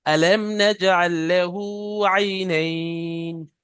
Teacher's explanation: মিম সাকিনটা গুন্না হবে না মিম সাকিনের পরে নুন আছে